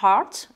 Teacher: ce EA, vous allez prononcer A. C'est un A un peu ouvert, mais certainement pas E